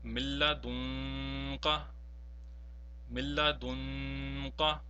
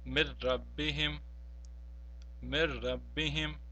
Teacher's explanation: whenever nun sakin or nun tanween is followed by lam or ra, we will not pronounce the nun sakin or nun tanween at all. So in the first example, we see that there is a nun sakin which is followed by a lam, therefore we will not pronounce the nun sakin at all. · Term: perfect idgham